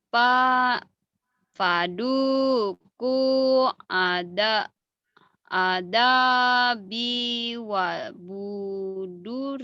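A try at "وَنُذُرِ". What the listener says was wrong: Wabuset bukan wabuset. Wanuduri nun. Banyak ketuker nun, nunnya ketuker ba.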